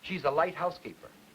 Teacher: All right, now, for the number 3, I am going to put the same stresses on housekeeper as I did in number 2. But I'm now going to put secondary stress on the light.